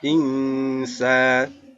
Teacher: Ada nun sukun bertemu dengan sin, dibaca ikhfa. Cara membacanya yaitu samar.